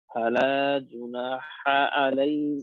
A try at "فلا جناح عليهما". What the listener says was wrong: ফালা জুনাহা আলাইহিমা আইনের উচ্চারণ সুন্দর হয়নি আপনার হরফের উচ্চারণ এখন অনেক দুর্বলতা রয়েছে হরফের মেহনত করতে হবে ফালা জুনাহা আলাইহিমা জুনাহা বলেন কেন এটা হা তো জুনাহা আলাইহিমা